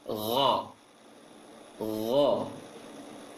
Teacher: pengucapan G dalam bahasa Arab tidak ada, tapi akan dicampur dengan suara tahanan angin di tenggorokan. Gha. Jangan go, jangan ghairil, tapi gha. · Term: ghain